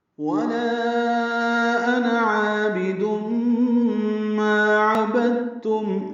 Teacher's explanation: واو ہونٹوں کی نا تمام گلائی سے ادا کریں گے. لا الف مدہ کے بعد حمزہ آنے کی وجہ سے لام کو لمبا کر رہے ہیں، مد منفصل.